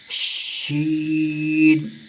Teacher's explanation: اس شین کو آواز پھیلا کر پڑھتے ہیں